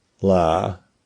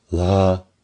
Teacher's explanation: One has ah with creaky voice. One has ah with breathy voice.